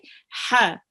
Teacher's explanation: Just a reminder that this ha, it's read from the middle of your throat.